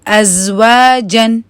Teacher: ہونٹوں کو بھی گول کرنا ہے واؤ کی وجہ سے، اور پھر اس کو آپ نے 2 کاؤنٹس پڑھنا ہے